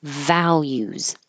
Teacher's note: And that final S sounds like a Z.